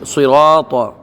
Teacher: صراط صاد را طا تینوں پر پڑھ جائیں گے